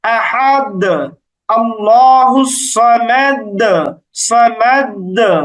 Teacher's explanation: এই যে দালে ধাক্কা দিয়ে উচ্চারণ করছি, এই ধাক্কা দেওয়ার নামই মূলত কলকলা